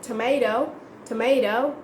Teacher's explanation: sometimes Americans tend to speak their T's as D, especially after a vowel